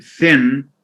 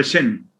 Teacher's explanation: instead of saying uh thin they would say sin this occurs in syrian dialect